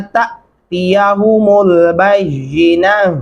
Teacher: अब यहाँ पे वक्फ करते हुए आप ता को हा में बदल देंगे।